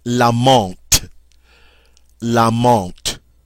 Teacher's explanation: Notice we never hear the N because it's part of the nasal sound. Notice also that the TH is pronounced like a T.